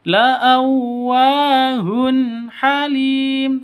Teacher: Tanwin bertemu dengan ha, jelas terang karena izhar halqi